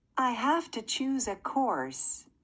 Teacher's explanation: I heard the A in have to elongated just a little bit. So this was in fact the strong form.